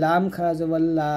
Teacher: লাম জিহ্বার আগের কিনারা উপরের মারি দাঁতের সঙ্গে লাগবে